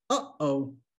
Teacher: has a glottal stop so the word uh oh in english that little stop between a and o that we mark with a dash in english that's a glottal stop